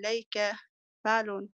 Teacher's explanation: على صيغة فعل بالنبر على حركة اللام من الكلمة وحركة الفاء من الصيغة